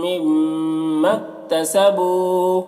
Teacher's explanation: مما کے میم یہاں پر میم مشدد ہے، یہاں پر بھی غنہ ہوگا اور الف مدہ ہے، تو الف مدہ کو نہیں پڑھیں گے کیونکہ یہاں پر ملائیں گے، کاف کے اوپر سکون ہے تو الف مدہ کو نہیں پڑھا جائے گا، میم کو کاف سے ملا کر پڑھیں گے۔ تسبو بو میں واو مدہ ہے، ایک الف کے برابر کھینچیں گے۔